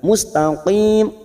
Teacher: Mustaqim huruf qaf juga. Mustaqim qaf ini juga huruf isti'la, huruf tebal, bukan kaf ya